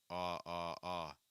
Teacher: My mouth's widening. So the back of my tongue is high and the front of my tongue is down, and my mouth is wider. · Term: ah sound